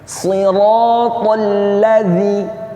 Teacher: Di situ lamnya bertasydid, bukan dibaca dengung ya. Jadi bacaannya sekedar menekan ke huruf lamnya, tasydid ya, ditekan ya, bukan didengungkan.